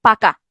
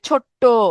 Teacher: আমাদের কোনো বক্তব্য যখন জোর দেওয়ার জন্য ব্যবহার করি তখন ব্যঞ্জনের দ্বিত্ব উচ্চারণ হয় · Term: ব্যঞ্জন দ্বিত্ব